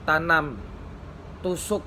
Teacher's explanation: fonem t bunyi lepas jika diikuti oleh vokal